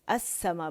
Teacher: आप देखें ये लाम शमसिया है, ठीक है, लाम अस्समा में जो लाम, क्योंकि लाम के बाद हमारे पास शमसी हर्फ सीन आ रहा है, ठीक है, तो इसने अपने अंदर लाम को मदगम कर लिया है और वो मुशद्दद हो गया सीन। अब लाम सीन की शक्ल में, मुशद्दद सीन की शक्ल में पढ़ा जा रहा है, तो लाम हमज़तुल वस्ल के बाद हमारे पास क्या आया था, अल सा था ये, लेकिन उसमें मर्ज हो गया तो अस्सा बन गया, ठीक है, अस्समा बन गया।